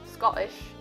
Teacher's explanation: glottal stop the linguistic term for dropping the sound of the letter T from the middle of the word